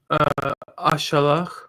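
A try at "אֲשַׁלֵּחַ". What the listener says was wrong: Ashalach or Ashaleach. The future can have the Each instead of Ach. Or Tishaleach.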